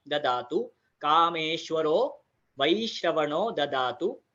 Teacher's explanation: Again यहाँ पर ऐ की मात्रा, ऐ का उच्चार आएगा, वैश्रवणो ददातु। ददातु में दोनों द जो है वो अल्प प्राण अक्षर है, महाप्राण उसमें नहीं आता